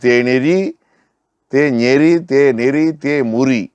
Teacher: அந்த நகர ஒற்று மறைந்து வரும்